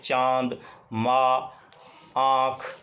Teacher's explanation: अनुनासिक जो स्वर हैं उनका उच्चारण मुख और नाक दोनों से किया जाता है